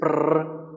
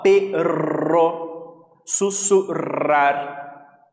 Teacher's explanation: a pronúncia desse doble R, esses dois R's, sempre vai ser mais forte, né, como se fosse tremido mesmo